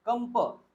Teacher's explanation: हा जो अनुस्वार आहे आता हा रिप्लेस होईल प वर्गातील अनुनासिकानी